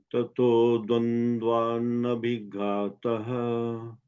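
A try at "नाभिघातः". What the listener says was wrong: Okay, you said B, nabi. No, it's nabhi. You know, ba and bha. Ba is alpa prana, bha is maha prana. So we have to say nabhi ghataha.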